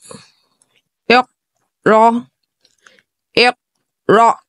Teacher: قاف میں قلقلہ ظاہر ہوگا کیونکہ قاف ساکن ہے